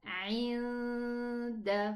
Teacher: I am actually at the door of the dal. I pronounce the ghunna and then pronounce the dal. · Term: ikhfa